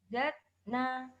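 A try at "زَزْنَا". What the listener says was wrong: Zaz. Nafasnya belum keluar, Bu. Zazna. Zazna.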